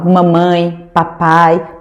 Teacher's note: Porque o fonema e o fonema p de mamãe e de papai são pronunciados, são articulados com os meus dois lábios, o de cima e o de baixo.